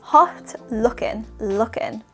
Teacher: we are not pronouncing the final g or G sound in looking